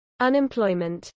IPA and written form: ʌnɪmplˈɔɪmənt (unemployment)